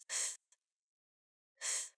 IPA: θ